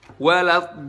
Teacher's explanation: Buat kalian yang masih baca huruf do dengan membulatkan bibir itu salah, karena bunyinya O yang kita dengar O itu bukan karena membulatkan bibir, tapi karena kita mengangkat lidah bagian belakang kita dan mempersempit katup epiglottis alias di tenggorokan kita. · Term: huruf isti'la